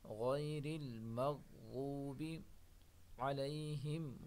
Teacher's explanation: کو موٹا پڑھیں گے، را کو باریک پڑھیں گے، غیر المغضوب، غین اور ضاد دونوں کو موٹا پڑھیں گے